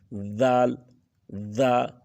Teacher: کے ساتھ زبان کو تھوڑا سا نکال کے اوپر کی نوک، زبان کی نوک تھوڑی سی اس دانتوں کے ساتھ لگی بھی ہوگی اور تھوڑی سی باہر بھی نکلی ہوگی اور اسی دانتوں کے ساتھ چمٹی رہے اور پھر آپ زال